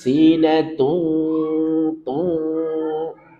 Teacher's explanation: ada tanwin bertemu dengan wawu, maka idgham bi gunnah. Pastikan ada dengung. · Jadi dia masuk ke rongga hidung, pastikan ada gunnah, ada dengung.